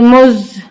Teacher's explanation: अब यहाँ पे जा मुशद्दद है, इसको सख्ती से पढ़ेंगे। मुज, जा मीम ज़बर ज़म, मीम मुशद्दद है और उसको रूल के मुताबिक हम यहाँ गुन्ना भी करेंगे, सख्ती से भी पढ़ेंगे।